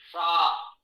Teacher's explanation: मूर्धा पर जिह्वा स्पर्श करे तो मूर्धन्य शा